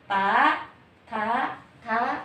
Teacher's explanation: Ini lidah hadir ke ta, karena tempat tumbuhnya di gigi, bukan ke sini, di tempat tumbuhnya gigi disebut pangkal gigi. Jadi ini ujung lidah menyentuh pangkal gigi seri atas.